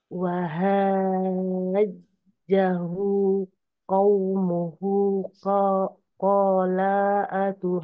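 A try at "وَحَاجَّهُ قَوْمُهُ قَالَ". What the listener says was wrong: Lanya kepanjangan, hati-hati. Qala atuha hanya kurang panjang sedikit lagi Bu. Wahajja. Jahu. Di sini afwan sedikit lagi Bu. Wahanya tadi 6 harokat lebih panjang, terus hu-nya 2 harokat. Wahajjahu qaumuhu. Oke, sedikit di sini Bu. Qala atuha. Lanya hati-hati enggak kepanjangan. Qala.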